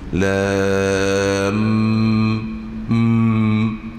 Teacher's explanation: Jadi di sana ada syaddah kerana ada dengung mim, seolah-olah mim bertemu dengan mim